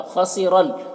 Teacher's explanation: خا کو پر پڑھیں گے، حروف مستعلیہ میں سے ہے، را کو پر پڑھیں گے